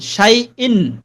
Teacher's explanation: ইয়াটাকে এখন শক্ত করা যাবে না, কারণ ইয়া লিনের হরফ হয়ে গেছে, নরম হবে